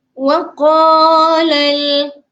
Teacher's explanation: qa 2 harakat. Sebab sebelah qa tu ada huruf mad iaitu huruf alif. Kena panjangkan.